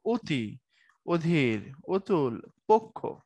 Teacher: অবর্ণের ও যেটাকে সংবৃত্ত বলছি